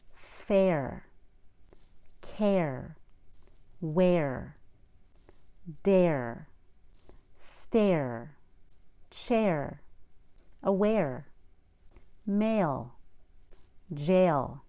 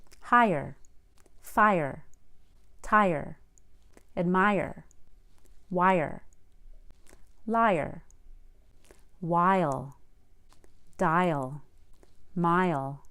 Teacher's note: schwa or short u sound before an R or L